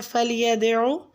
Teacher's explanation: آیت نمبر 17 میں فلیدعو، فلیدعو میں لام کو باریک پڑھیں گے، اور ید میں دال ساکن پہ قلقلہ کریں گے، اور عین کا مخرج آپ نے وسط حلق سے ادا کرنا ہے